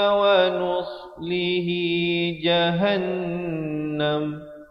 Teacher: wajibul gunnah 2 harakat dengung